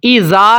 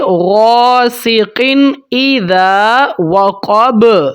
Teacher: اظہار کا مطلب ہے اخفا یا غننے کے بغیر، ہولڈ کیے بغیر، غاسق، ایسے نہیں پڑھنا، جلدی سے ادا کریں گے، غاسق اذا، ذال جو ہے نا، ذال، اس کی سیٹی نہیں آپ نے نکالنی، ایزا نہیں پڑھنا، ذال کی سیٹی نہیں ہوتی، اس کو بریک آواز میں سیٹی کے بغیر ادا کیا جاتا ہے۔ اذا وقب، قاف موٹا، با حروف قلقلہ میں سے ہے، اس کے اوپر قلقلہ ہوگا۔